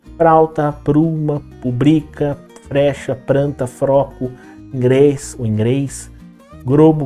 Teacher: Por um fenômeno na articulação, acaba sendo mais fácil, acaba sendo mais prático, em vez de você fazer esse movimento gl, que envolve o L, essa junção de uma consoante com a consoante L, acaba sendo mais fácil você produzir no lugar do L o R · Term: troca do L pelo R